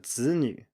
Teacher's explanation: the 子 here definitely has a full tone. It is not a neutral tone.